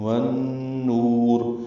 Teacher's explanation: والنور میں واو کو نون سے ملا رہے ہیں، ادغام شمسی مع الغنہ ہے. والنور نو واو مد ہے دو حرکات لمبا ہے.